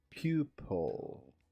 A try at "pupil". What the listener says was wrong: You do want to stress on the first.